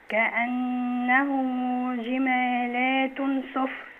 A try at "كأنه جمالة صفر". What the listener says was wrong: جمالة صفر. لا مش جمالات، جمالة صفر.